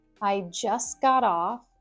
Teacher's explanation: we have the T dropped in just. I just got off, but also the T at the end of got is more of a D sound.